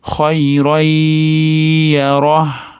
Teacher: Qing'ir tanvin mana yo'ga kirgizib yuboramiz. G'unnali idg'om ushlab turamiz.